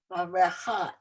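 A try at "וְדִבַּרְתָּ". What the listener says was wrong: It's a tav.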